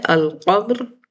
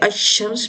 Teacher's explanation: حروف شمسی میں ہم اسے حروف شمسی کو مشدد دے دیتے ہیں، جس کی وجہ سے وہ دگنا پڑھا جاتا ہے